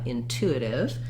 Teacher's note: in intuitive we have second syllable stress which means we have a clear oo vowel